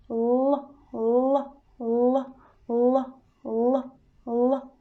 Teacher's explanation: So to pronounce l, we don't need push so much. We just very lightly touching the teeth with the apex.